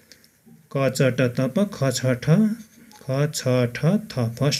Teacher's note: अघोष भनेको फोक्सोबाट सास बाहिर निस्कँदा स्वर चिम्टीमा कम्पन कम भई आवाज कम आउने स्थितिमा उच्चारण हुने व्यञ्जन वर्णहरू नै अघोष हुन्